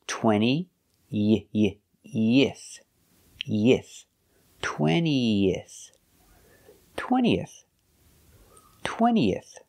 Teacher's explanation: to connect the e in 20 to the if another vowel we need to link the vowels with the sound ye like yellow and yesterday